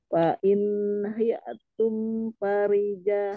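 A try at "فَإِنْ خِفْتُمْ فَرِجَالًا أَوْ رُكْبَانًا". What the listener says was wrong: Khif, khif diartikan udaranya. Fa in khiftum. Khif lebih ngorok. Fa in khiftum.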